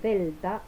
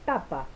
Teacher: se producen por la articulación del ápice o punta de la lengua detrás de los incisivos superiores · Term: consonantes apicodentales